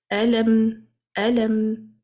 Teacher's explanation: Let the sound come from the nose for a while, but not for too long. Otherwise, the meme will turn into ghunna letter with the shadda. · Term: tawasut